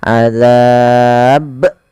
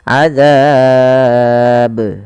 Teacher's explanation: harus memiliki pantulan karena Ba punya sifat yaitu QQ qqya memantul maka ketika kita membaca ba yang disukunkan maka ia harus dipantulkan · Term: qqalah